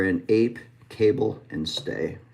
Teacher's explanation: we start with our tongue front mid A and then we move it up a. So that is a dip thong, a moving vowel.